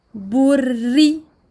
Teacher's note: je double le ra et je l'amincis parce qu'il porte la kasra